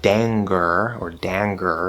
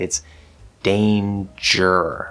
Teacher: Also note that in words like danger, the N and the G are together, but this is not the back N